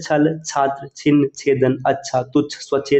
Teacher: अगर आप छ को देखेंगे तो तालु वाले में आएगा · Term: तालु छ